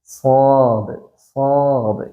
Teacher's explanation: അക്ഷരമാണ് സ്ാദ് എന്നുള്ള അക്ഷരം സ്ദ് ഉച്ചരിക്കേണ്ടത് ഈസായിന്റെ അതേ മഹറജ് തന്നെയാണ് പക്ഷേ നാവിന്റെ മുരട് ഭാഗം മേലെ അണ്ണാക്കിലേക്ക് ഉച്ചരിച്ചിട്ട് ചുണ്ട് കൂർപ്പിക്കാതെ ഉച്ചരിക്കണം അപ്പോ ചുണ്ടൊന്നന് ഇങ്ങനെ നമ്മൾ പരത്തി പിടിച്ചിട്ട് സ്ാദ് സ്ാദ് എന്ന് തന്നെ ഉച്ചരിക്കണം